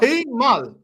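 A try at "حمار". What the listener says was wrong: Use the R. Use the R.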